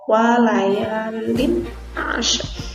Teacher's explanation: Ini tanwin ketemu dengan ain termasuk huruf idhar, jadi bacanya jelas tanwinnya, kelihatan dari ada bunyinya ya, walayalin ashrin, seperti itu.